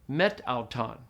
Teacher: The alpha on the meta drops off, and you say met auton. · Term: elision